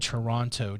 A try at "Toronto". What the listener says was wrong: No, you don't say the T.